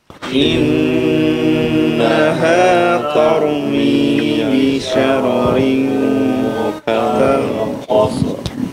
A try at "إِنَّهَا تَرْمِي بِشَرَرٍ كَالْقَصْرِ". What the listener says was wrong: Jangan tormi ya, ta difathahkan. Tarmi, tarmi. Kal qasr ya, sad dan ra-nya dijelaskan ya. Qasr, qasr, qasr ya. Innaha tarmi bi syararin kal qasr.